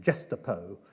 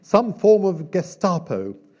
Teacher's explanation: Churchill pronounced Gestapo with a soft G and the accent on the last syllable